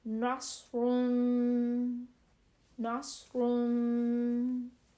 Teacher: صاد کی آواز ہے وہ موٹی اور سیٹی والی ہوتی ہے. سین کی آواز باریک اور سیٹی والی, اور صاد کی آواز موٹی اور سیٹی والی.